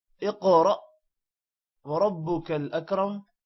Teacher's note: اقرأ قاف موٹا ہوگا، قاف پر قلقلہ بھی ہے، را بھی موٹا ہوگا اور حمزہ پر جزم ہے جس کی وجہ سے جھڑکا پڑا جائے گا۔ اقرأ وربك الاکرم، را موٹا ہے اور اکرم کا را بھی موٹا ہے۔